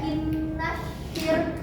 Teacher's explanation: Selanjutnya ada innasyir, kan ada alif lam ya, alif lamnya itu disebut alif lam samsiah dan dia nggak dibaca jelas alias lebur